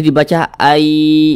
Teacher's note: ada tapi dianggap tidak ada no gitu jadi dibaca Ai gitu kemudian didengungkan digunahkan jadi suaranya itu kita tahan sejenak kita panjangkan